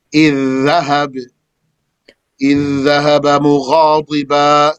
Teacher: إذ stops on a dhal, and dhahab starts with a dhal. So the dhal is merged into the dhal. The judgment of this idgham is that it is necessary, wajib.